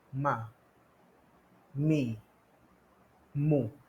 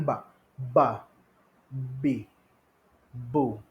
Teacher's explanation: kalau mim, dia akan tutup juga, dia akan rapat, tapi tidak terlalu kuat. Dia akan secara ringan saja.